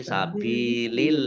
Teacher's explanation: Allahnya dibaca tipis karena harokat di depannya kasroh. Sabilillahi ya tidak sabilillah ya.